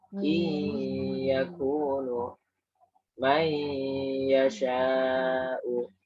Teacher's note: Jadi nun sukunya sudah hilang karena masuk ke ya. Tidak in yakunu, tapi iyakunu.